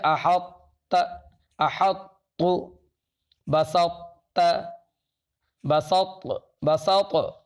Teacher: اس طرح سے ظاہر کیا جائے گا کہ طا استعلاء اور اطباق کو ادا کر کے زبان کو الگ کیے بغیر تا کو ادا کیا جائے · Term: ادغام ناقص